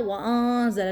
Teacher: نون ساکنہ کے بعد حروف زا تو انہی 15 حروف میں شامل ہے جہاں پر ہوتا ہے اکفا ، تو یہاں پہ ہمارا کیا ہو رہا ہے اکفا، انزل